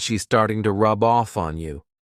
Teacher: So instead of to, you can use an unstressed T.